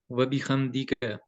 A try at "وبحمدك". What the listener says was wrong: وبحمدی، حمدی کا. یہ یہاں پہ خا کی آواز آ رہی ہے، خم. یہ ہے وبی حا زبر میم ہم.